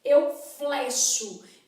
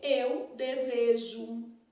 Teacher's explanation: apresenta vogal E fechada em toda a conjugação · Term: E fechado